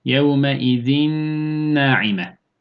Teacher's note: burada zaten nun nuna uğradığı için sadece burada gunne sesini vermemiz gerekiyor